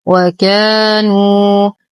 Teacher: بترقيق الكاف والألف تتبع الكاف ترقيقا. نحاول تخليص الواو من غنة النون، فنقول نو وليس نو.